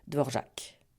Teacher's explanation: ils mettent l'accent sur la dernière syllabe sans nuance de longueur